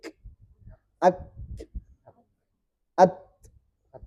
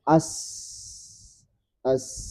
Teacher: Karena ada sifat syiddah ini harus berhenti dulu suara ak baru kasih angin. Ak at. Nah, seandainya gak ada syiddah pasti seperti sin misalnya sin as as ya.